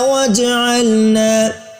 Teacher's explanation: جیم حروف قلقلہ میں سے ہے، اس کو حرکت دے کر پڑھیں گے، ہلا کر پڑھیں گے۔